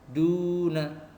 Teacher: Contoh abiduna, di situ ada mat tabi'i. Duna, panjangnya 2 ketukan atau 2 harokat.